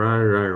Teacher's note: And the sound ra takes quite a lot of energy. The r, you have to trill your tongue and takes a lot of breath and energy.